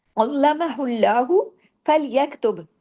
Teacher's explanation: अल्लाह के नाम से पहले पेश आ गया लाम जलाला होगा अल्लाह के नाम में लाम हैवी होगा